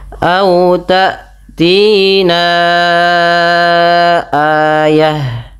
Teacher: Panjangkan bunyi suara na sepanjang empat atau lima harakat. Karena pada lafal ini terdapat hukum tajwid berupa bacaan mad jaiz munfasil. · kita melafalkannya adalah kita panjangkan empat harakat